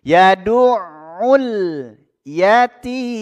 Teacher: Sebelum huruf mim di situ ada huruf mad tabi'i. Jadi dipanjangkan dulu. Ya, 6 harokat. Kita baca 6 harokat. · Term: mad arid lis sukun